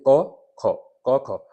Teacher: क और ख में आपको कोई वाइब्रेशन नहीं दिख रहा है। सिंपल ही बोले जा रहे हैं। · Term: अघोष